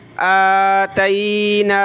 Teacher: آتیناہم نون پہ کھڑا زبر ہے، ایک الف کی لمٹ میں اوپر کھینچیں گے